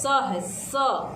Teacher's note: दंत स में हम दांत का इस्तेमाल करते हैं